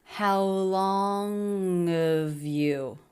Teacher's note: I noticed there's a dropping the H reduction here